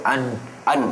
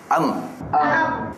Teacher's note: makhraj yang dengung khususnya Nun dan m yang bersabdu memang di hidung